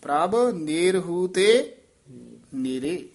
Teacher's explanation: ਨਾ ਵਿੱਚ ਡੈਸ਼ ਦੇ ਕੇ ਬੋਲਣਾ ਨੇਰਹੂ ਲਮਕਾ ਕੇ ਜੇ ਬੋਲਣਾ